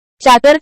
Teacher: चाकर शब्दातील चा या आद्याक्षराचा उच्चार दंत आणि तालूच्या सहाय्याने होतो, म्हणून तो दंततालव्य प्रकारात येतो.